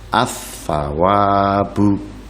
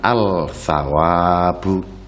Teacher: bukan al-tsawabu, tapi diidghamkan ke huruf setelah lam, yaitu tha, menjadi ats-tsawabu